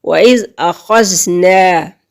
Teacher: نون کی آواز کو ناک میں نہیں لے کے جانا